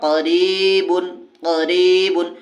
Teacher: زیر ہے اس لیے یا مدہ ہوگی، یا مدہ کو ایک الف کے برابر کھینچ کر پڑھیں گے